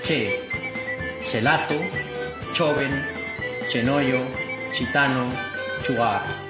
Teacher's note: Evolución de G y J iniciales latinas al fonema palatal africado sordo